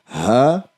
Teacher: हा जो है आपके सीने की तरफ, जो गले का नीचे वाला हिस्सा है सीने की तरफ, वहां से अदा होता है।